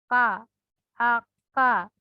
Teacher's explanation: belakang lidah menyentuh langit-langit mulut